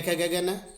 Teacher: ख ग घ न, ये। और हकार और विसर्ग, इनका उच्चारण स्थान कंठ है। अर्थात ये इनका उच्चारण सीधे कंठ से होता है, इसलिए इन्हें कंठ स्थान, इनका उच्चारण स्थान कंठ है।